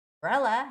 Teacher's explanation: Umbrella has the second syllable stress.